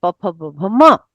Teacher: प फ ब भ में तो पूरा स्पर्श कर रहे हैं ओठ दोनों आपस में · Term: ओष्ठ वर्ण